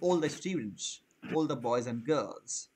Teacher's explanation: Similarly, আমরা যখন এই ডাবল এল এটার উচ্চারণটা আমরা করে থাকি অল, ওটার উচ্চারণটা অল হবে না, ওটার উচ্চারণটা হয় ওল।